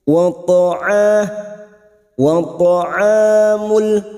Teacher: Aula artinya boleh berhenti namun terus lebih baik wata huruf th huruf th ini huruf istila Maka jangan samakan dengan ta huruf th ini Huruf tebal